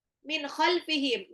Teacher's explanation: nun sukun ketemu kha itu adalah izhar, jelas